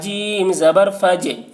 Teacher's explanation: سلام ہی حتی مطلع جیم زبر فج، جیم کے اوپر جزم ہے، جزم والا حرف کو پیچھے والا حرف فا سے ملا کر پڑھیں گے، اور جیم حروف قلقلہ میں سے ہے اور اس پر جزم ہے، اس لیے جیم میں قلقلہ ہوگا۔